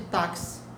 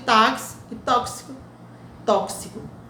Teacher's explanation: Na língua portuguesa, o X, às vezes, tem um som de KS, é no caso de táxi